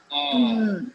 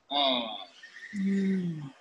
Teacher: our tongue is closing up near our alveolar ridge, and the air is escaping through the nose. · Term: N sound